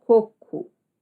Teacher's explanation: Algumas regiões vão falar coco, como se fosse um U